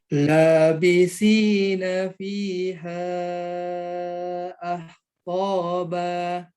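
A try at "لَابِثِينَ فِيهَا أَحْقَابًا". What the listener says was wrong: Hanya tipiskan. Karena dia tenggorokan tengah. Ahqaba.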